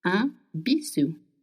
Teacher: It's spelled B-I-S-O-U. And S between two vowels in French makes the sound Z.